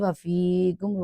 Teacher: فیکم میں ایک الف کی ادائیگی کی کیونکہ یہاں یا ساکن سے پہلے زیر ہے، تو یہاں حروف مدہ میں سے یا ساکن مدہ ایک آیا ہے.